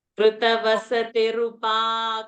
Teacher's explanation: Come and pause at pa, which is dirgha. Don't pause at ru. Ru is a rasva over there.